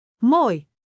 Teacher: Begin with rounded lips for, oh, move deeper into, oo, and glide upward to, ie.